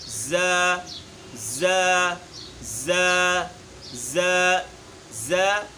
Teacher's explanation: زا وہ حرف ہے جس کو ہم سختی سے پڑھتے ہیں، اس کو حروف صفیر میں ہم شامل کرتے ہیں